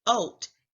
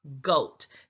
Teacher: The word goat is a 1-syllable word, but if the child was to leave out the g sound at the beginning of goat, that is an omission error because now they're saying oat instead of goat.